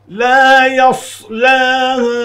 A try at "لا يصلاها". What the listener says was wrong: آپ نے یہاں پر بہت بڑی بڑی دو غلطیاں کی لا يصلح ہا جو پڑھا ہے یہ بڑی غلطی ہے یہ ہا نہیں ہے وہاں پر ہا ہے اور دوسری غلطی ہے ال پہ آپ نے بہت دیر تک آواز روکی ہے صرف نون اور میم پر آواز روک سکتے اس